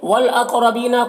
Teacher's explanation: دینی، دینی میں یا لین ہے، اسے نرم آواز کے ساتھ جلد پڑھیں گے۔ والاقربین، قاف کو پر پڑھیں گے، حروف مستعلیہ میں سے ہے، را کو بھی پر پڑھیں گے۔